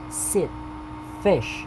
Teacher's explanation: front near close unrounded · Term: short vowel